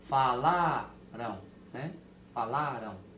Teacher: É como esse M tivesse o som do U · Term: ditongo nasal